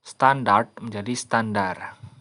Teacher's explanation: apokope yaitu pelepasan fonem pada akhir kata